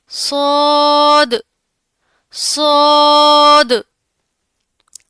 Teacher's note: यह मोटा पढ़ा जाता है। यानी मुंह भरकर इसे अदा करना है। इसमें भी सिटी की आवाज पाई जाती है। · زا، سین اور صاد کا سیم مخرج ہے، یعنی جب زبان کی نوک نیچے والے سامنے کے دو دانتوں کے اندرونی کناروں سے لگے تو صاد ادا ہوگا. یہ موٹا پڑھا جاتا ہے، یعنی منہ بھر کر اسے ادا کرنا ہے. اس میں بھی سیٹی کی آواز پائی جاتی ہے.